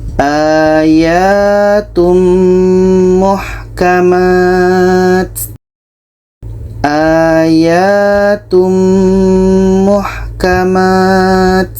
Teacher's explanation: Ada tanwin kita masukkan ke mim. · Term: idgham bi gunnah